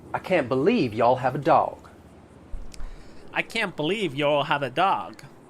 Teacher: I'll use that off-glide schwa in words like can't and have.